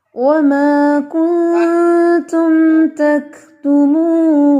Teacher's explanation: کاف کے اندر تھوڑا سا ہمس ہوتا ہے، تک تک تھوڑی سی آواز آتی ہے